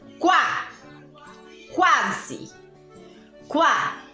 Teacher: O U tem um som mais fechado do que o A. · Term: semivogal